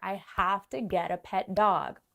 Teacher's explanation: Okay, a pet dog. We stress dog here.